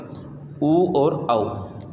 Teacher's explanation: वृत्ताकार स्वर वो होते हैं जिनको उच्चारित करने में हमारे होंठों की जो आकृति है वो वृत्त के समान बन जाती है। मतलब जब आप उसका उच्चारण करोगे आपको अपने आप ही ये पता चलेगा कि हमारे होंठों की जो आकृति है वो वृत्त यानी गोल हो जाती है।